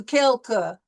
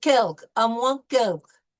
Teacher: We don't really put a lot of heavy weight on the second syllable.